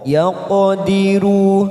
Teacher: qaf sukun warna biru namanya qalqalah sugro kita pantulkan.